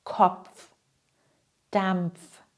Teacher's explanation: Beide Laut müssen hörbar sein. Das P und das F.